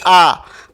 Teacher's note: विवृत में दीर्घ आ आ जाएगा जिसमें सबसे अधिक मुख खुलता है